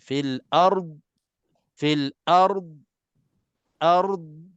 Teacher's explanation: D ini kena tahan sepenuhnya dan jangan keluarkan sedikit pun lantunan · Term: huruf dad mati